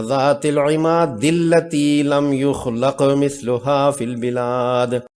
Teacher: دال کا لام مشدد سے ادغام ہوگا اور حمزہ وصلی حذف ہو جائے گی